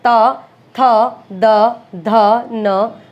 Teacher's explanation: जीवानीक यानी जीभ की जो नोक है वो दांतों को स्पर्श करेगी, ऊपरी दांत की पंक्ति का स्पर्श करती है, ठीक है। ये नहीं कि बिल्कुल दांतों के बीच में आ जाएगी, दांत जहां से शुरू होता है उस वाली पंक्ति को स्पर्श करती है। · तो दंत्य से आपको समझ आ ही रहा है कि वर्तस्य में तो मसूड़े पर टच किया था, लेकिन दंत्य में क्या होगा, दांतों पर जीभ लगेगी, ठीक है। जीवानीक यानी जीभ की जो नोक है वो दांतों को स्पर्श करेगी, ऊपरी दांत की पंक्ति का स्पर्श करती है, ठीक है।